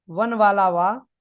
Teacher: वकार जो वा है, वन वाला वा, ये कैसा है? ये दंतोष्ठ से बोला जाता है।